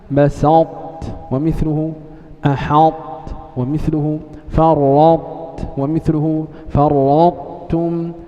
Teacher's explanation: أي طاء ساكنة في القرآن وقع بعدها تاء فإن حكم الطاء الإدغام